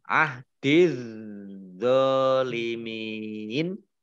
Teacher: Ahdiz zalimin, mim kasroh ya sukun mat tabi'i, tetapi karena bertemu dengan huruf terakhir yang dibaca sukun, maka menjadi mat ariz lis sukun. Mat ariz lis sukun dibaca panjang, boleh 2, 4, atau 6 harokat.